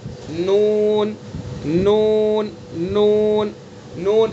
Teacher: جیسے لام کو ادا کیا ہم نے، لام کے اندر زبان کے کنارے کو ایک زاحک سے دوسرے زاحک تک، اور نون کے اندر زبان کے کنارے کو ایک ناب سے دوسرے ناب تک اور اوپر کے دانتوں کے مسوڑے سے ادا کریں گے، نون نون نون نون، اس طرح سے۔